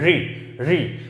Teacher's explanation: री, री तत्सम याद है, लेकिन री, ये री उच्चारण ही नहीं है इसका, री री री, जिव्या थोड़ी सी, जिव्या के आगे का हिस्सा थोड़ा घूमेगा, तालु की तरफ जाएगा और वहां हल्के से झंझनाट करते हुए बोली जाएगा री री, ऋतु ऋतु ऋतु, ऐसे कोई नहीं बोलता।